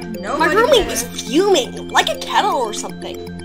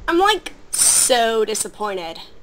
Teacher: the keys to imitating a Valley Girl accent are the rising intonation, the vocal fry at the end of the sentence, and the word like it's used like frickin' or bloody or whatever depending on where you're from.